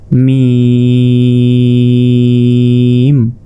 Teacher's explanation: ঠোঁটের ভেজা অংশ থেকে মিম উচ্চারিত হয়, মিম। মিমটা 4 আলিফ, মিম।